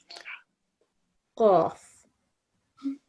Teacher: But try not to get the H sound in there. It's just a crisp, sharp Qaf.